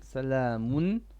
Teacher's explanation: don't make too much ghunna. It's only 1 beat.